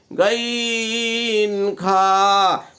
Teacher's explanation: 3 নম্বর মাখরাজ হলকের শেষ ভাগ হইতে গাইন খা